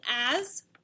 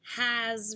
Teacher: it's a voiced s following a vowel